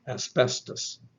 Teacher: The English pronunciation will pronounce the S like a normal S, which is voiceless.